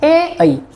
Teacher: कंठ प्लस तालु, इन दोनों को मिलाकर बनेगा कंठ तालव्य